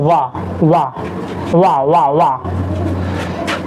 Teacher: दंत्योष्ठ, ऊपर के दांत प्लस निचला ओठ